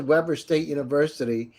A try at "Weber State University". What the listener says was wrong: Yeah, well, and it's pronounced Weber. It's not like the grill. It is Weber State.